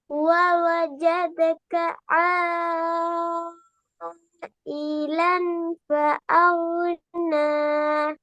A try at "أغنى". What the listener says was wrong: அகுன, அகு என்று வரக்கூடாது. இப்பதானே சொன்னேன், அகு நட வரும். அகுன்னு ஒன்னு கலக்குது இல்லையா கையில. அக்ன அக்ன. சரி, இப்ப ரெண்டு மாதிரி ஓதி காட்ட. அகுன, அக்ன. வித்தியாசம் எல்லாம் ரெண்டுக்கும். அக்ன, அகுன.